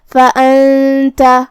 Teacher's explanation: یہاں نون ساکن ہے، پھر حرف التا ہے، یہاں بھی حکم ہے اخفاء تو ہم یہ حکم کو غنہ کے ساتھ ادا کریں گے